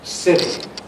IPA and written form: ˈsɪɾi (city)